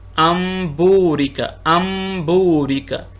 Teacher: اس مثال کے اندر دیکھیے کہ نون ساکنہ ہے، اس کے بعد با آ گیا تو با کو اب با نہیں پڑھیں گے بلکہ میم پڑھیں گے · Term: اقلاب